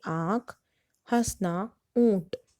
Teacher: अनुनासिक स्वर वे होते हैं जो स्वर मुख और नाक से बोले जाते हैं, जिनका सूचक चिन्ह चंद्र बिंदु होता है।